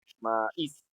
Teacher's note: Pero como está formando un hiato y tiene una vocal abierta que es la A y una cerrada que es la I, y la I es la que suena más fuerte